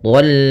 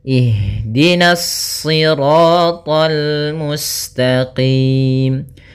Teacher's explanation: karena kita bertemu dengan huruf lam maka dia lamnya tipis. Jangan ikut tebal.